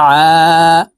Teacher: আইন হরফকে হালকের মধ্যখান থেকে চাপ দিয়ে উচ্চারণ করতে হবে কারণ আইনের মাখরাজ হালকের মধ্যখান থেকে হবে আইন আলিফ জবর আ